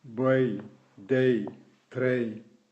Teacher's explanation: Association de deux voyelles pour donner un son proche du ei allemand